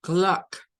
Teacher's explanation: pero De hecho no es una a no es como a es una mezcla realmente entre una a y una o